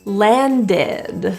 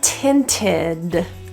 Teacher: we're going to pronounce that e d as ID so there's a vowel pronunciation there